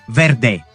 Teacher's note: O som de V conhecido como fricativa lábiodental sonora como em verde.